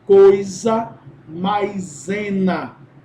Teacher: ao invés do som de chiado nós vamos ter o som de z · Essas duas palavras têm ditongo e em seguida o som do Z, então vamos grafá-las com S.